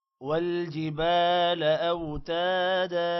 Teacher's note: والجبال، با کے بعد الف ہے، لمبا کریں گے، لا کو لمبا نہیں کرنا۔ اوتادا، تا کے بعد بھی الف ہے، اس کو بھی لمبا کریں گے۔